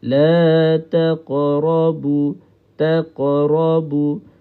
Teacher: huruf qaf ini dia ada satu sifat nama dia istilak Sifat istillak ni maksudnya dia tebal ya. Bila kita qalqalahkan huruf qaf maka kita kena ke arah baris atas dia.